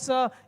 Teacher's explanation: इस स का उच्चारण जो है दांत से होता है